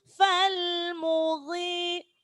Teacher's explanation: Ghain itu huruf tebal. Karena dia kasro maka ketebalannya berkurang.